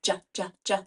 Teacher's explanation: stretch it out but it is a voiced sound JJJ so when I make that JJJ sound I feel my vocal cords buzzing